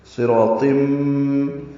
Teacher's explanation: قواعد اسی طرح ہے، صاد را الف طا پر ہے، اور تنوین کے بعد میم آنے کی وجہ سے ادغام ہو رہا ہے یہاں پہ